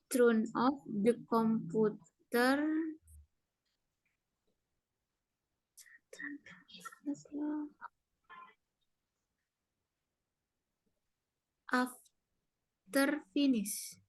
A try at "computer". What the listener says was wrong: Jadi komputer itu bacanya bukan komputer, tapi computer. Karena ada U ya. U itu dibacanya Y.